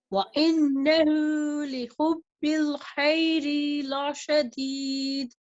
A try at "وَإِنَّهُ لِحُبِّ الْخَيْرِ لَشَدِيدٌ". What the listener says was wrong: So you forgot a qalqala here. The dal changes to a dal sukun because of the stopping sign. So we're going to echo the sound of the dal sukun. La shadid. So hit the makhraj and bounce the sound back. La shadid.